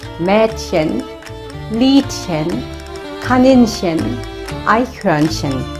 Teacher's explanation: In case of having chen as a diminutive form, it's pronounced like [ç] as well.